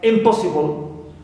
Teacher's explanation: Also, we have the prefix im, like impossible. So here po is stressed, but im is neutral. No stress on it.